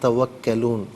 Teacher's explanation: یہ جو کاف ہے یہ موٹی کاف نہیں ہے, باریک کاف ہے